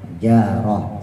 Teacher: ta marbutah ketika diwakaofin ketika dimatiin jadi ha